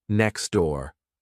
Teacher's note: where the T disappears and two words get linked together.